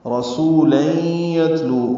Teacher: را پر پڑھیں گے زبر کی وجہ سے، سو واو مدہ ہے، 2 حرکات لمبا کریں گے.